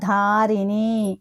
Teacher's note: ధ ధారిణి అనేది కూడా మనకి మహాప్రాణక్షరం